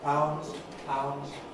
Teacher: No D in pounds. There could have been.